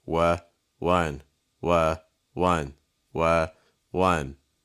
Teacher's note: we have the slight W sound with a schwa, so like wa, wa. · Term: schwa sound